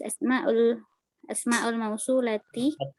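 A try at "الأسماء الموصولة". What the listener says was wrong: Al-nya tadi lewat ya. Itu ada al, jadi harus dibaca.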